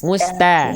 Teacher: ta huruf tipis jadi ta terbuka